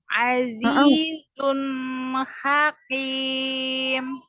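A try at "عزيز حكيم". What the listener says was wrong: Hakim. Hakim. Hakim. Jadi jangan terlalu ke belakang, jadi qaf ya, huruf qaf.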